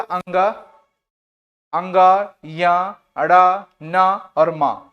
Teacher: पंचम अक्षर है और इनका उच्चारण स्थान नासिका होगा